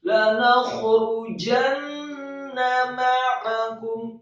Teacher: Kemudian kata ma'akum, mimnya fathah 1 harokat, kemudian ainnya ditekankan keluar dari tenggorokan 1 harokat, kemudian kafnya yang marfu atau dhammah 1 harokat dan mimnya disukunkan.